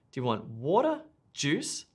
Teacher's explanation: if you're giving lists notice the rising rising rising and then falling intonation